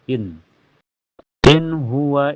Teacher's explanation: karena nun sukun ketemu ha cara bacanya nun sukunnya dibaca jelas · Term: idhar halqi